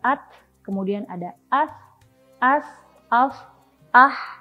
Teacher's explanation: ketika mengucapkan huruf-huruf ini, maka nafas kita mengalir dan pita suara kita tidak bergetar. Jadi mengalirnya dengan lembut saja, seperti yang tadi sudah aku contohkan. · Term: hamz